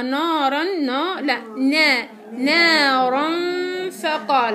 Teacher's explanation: عندي غنة مع الفاء اللي هي غنة الإخفاء